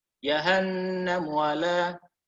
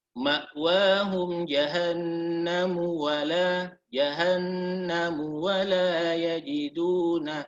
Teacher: Jadi mimnya itu seakan-akan antara sukun dan dhammah. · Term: ikhtilas